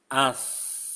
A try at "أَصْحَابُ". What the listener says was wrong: Kurang tebal. Pangkal lidahnya naikkan. Els, els, els. Itu seperti sin. As, els. Ditinggiin lagi pangkal lidahnya. Nah, jadi antum sofinnya masih ke sin ya.